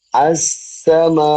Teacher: നാവിന്റെ രണ്ട് പല്ലുകളുടെ ഇടയിലൂടെ എയർ പുറത്തു വരികയാണ്. നാവ് നിൽക്കുന്നത് സത്യത്തില് നാവിന്റെ ടിപ്പ് ശരിക്ക് ടച്ച് ചെയ്യുക താഴെ മുൻപല്ലുകളുടെ അടുത്തേക്കാണ്. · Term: സീന